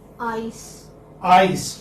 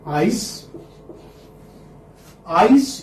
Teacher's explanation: So this is the glide is from this place to that place. This place is called as front, open, unrounded vowel to the centralized front unrounded vowel between close and half close. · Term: diphthongs